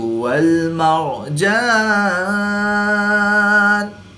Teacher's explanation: را ساکن سے پہلے میم پر زبر ہے تو را کو پور یعنی موٹا پڑھیں گے۔